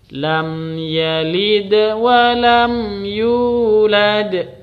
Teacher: Terus lad ini sama dengan huruf qalqalah yang dibaca, yang dipantulkan